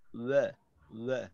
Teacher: ওয়াওয়ের উচ্চারণটা কিন্তু আমাদের অনেক অই হয়ে যায়, অ না, ওয়া, ওয়া